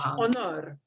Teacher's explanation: we punch the second O harder in Spanish